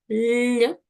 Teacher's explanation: Дійсно приголосний, м'який і дзвінкий.